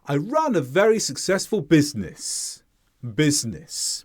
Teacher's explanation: We might mix in some highlighting as well to bring particular emphasis to a word, but in general, we will fall like this. And then on the last sound, we fall in tone more sharply than the others. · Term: sharp drop